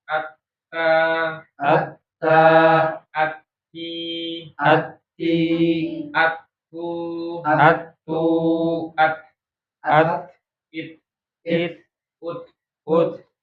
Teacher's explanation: ut ut oke di mana baknya ujung lidah pangal ya ujungida menyentuh itu pangkal gigi seri atas ya itu makhraj huruf ta